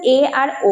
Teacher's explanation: এ আর ওটাকে আমরা বলতে পারি উচ্চ মধ্য স্বরধ্বনি